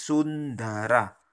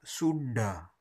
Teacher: ta yang ujung lidahnya diangkat ta tebal ya, atau da ujung lidahnya diangkat